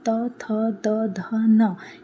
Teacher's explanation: दांत में टच हो रहा है। तो जब हम त, थ, द, ध, न ये बोलते हैं ना तो हमारी जीभ हमारे दांतों को टच करती है। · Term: त वर्ग